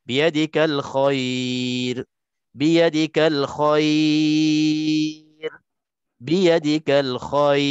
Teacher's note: Maka cukup syarat untuk maklin, boleh kita baca 2, 4, 6. Bukan boleh, kena baca.